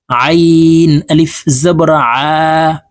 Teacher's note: এই আইনকে হলকের মধ্যখান থেকে চাপ দিয়ে উচ্চারণ করব কারণ আইনের মাখরাজ হলকের মধ্যখান থেকে হবে